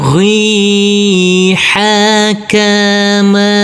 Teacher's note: Huruf ba harus kita pantulkan huruf ba yang bersukun ini karena ini adalah bacaan qalqalah